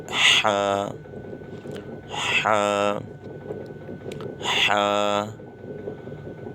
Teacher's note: حلق کے بیچ میں سے، یہ حروف حلقی ہے